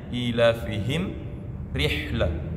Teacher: Kemudian kata ilafihim ada mim sukun, setelahnya ada rihlah, huruf ra. Mim sukun bertemu ra itu dibaca jelas tanpa dengung. Jelas mimnya, ilafihim rihlah.